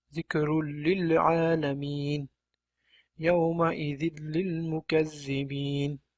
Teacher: sukunli nun yoki tanvin l tovushiga yo'liqqanda bu yerda ham xuddi ro qoidasi kabi bir xil, ya'ni g'unnasiz idg'om qilinadi hamda n tovushi tushirib qoldiriladi.